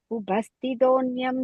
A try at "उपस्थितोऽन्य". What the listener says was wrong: Upastitonya, அங்க im கிடையாது, just upastitonya, second line la. Okay, mine doesn't have the in there.